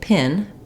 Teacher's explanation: when you say pin, it just comes out, there's a burst of air for the P, and then goes right into the word